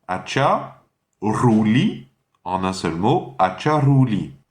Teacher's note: Ensuite c'est Ruli, donc la R espagnole, la R, le R roulé.